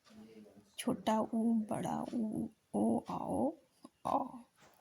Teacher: व्रतमुखी में ओठ जो है गोलाकार हो जाते हैं